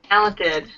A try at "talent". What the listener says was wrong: So as opposed to saying talent, that's more a little bit British, try talent.